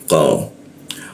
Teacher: huruf qo tidak ada hembusannya